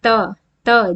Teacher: दांतों को छूते हुए ये ध्वनि निकलती है त त जीभ हमारी दांतों के बीच में आती है थ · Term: दंत व्यंजन